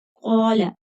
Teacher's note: قاف حرف مستعلیہ پر کر کے پڑھیں گے، خالی الف ہے، مد ہوگی۔